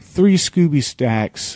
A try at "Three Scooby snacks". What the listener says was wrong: Snacks, not stacks. You said stacks.